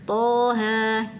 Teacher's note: bacanya cuma dua harakat aja